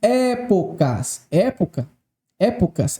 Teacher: essa palavra possui três sílabas e a tonicidade recaiu sobre a antepenúltima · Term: proparoxítona